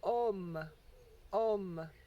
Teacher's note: when you complete the sound the lips do come to rest together and they do make a m sound but the the m actually signifies that the sound is nasalized